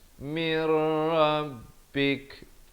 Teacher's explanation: Mir di sini masuk tanpa dengung. Kalau ini masuk beserta dengung, ini masuk tanpa dengung.